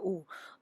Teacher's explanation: दूसरे प्रकार का जो ध्वनि है आवाज है वह है दीर्घ ऊ तो लंबकालिक ज्यादा समय के लिए तो उसकी गणना होती है दो मात्रा